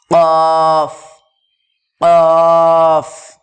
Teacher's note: জিহ্বার গোড়া তার বরাবর উপরে তালুর সাথে লাগিয়ে উচ্চারিত হয় কফ